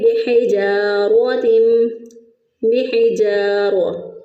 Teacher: ہا کو پھر اسی طرح وسط حلق سے ادا کیا